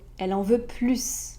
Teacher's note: positif, c'est plus, donc on prononce le S, on ajoute un son